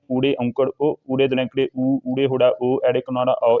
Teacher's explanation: ਇਹਨਾਂ ਦੇ ਬੋਲਣ ਸਮੇਂ ਮੂੰਹ ਗੋਲ ਰਹਿੰਦਾ ਹੈ। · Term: ਗੁਲਾਈਦਾਰ